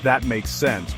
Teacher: Try saying, That makes sense, with a falling tone to show understanding.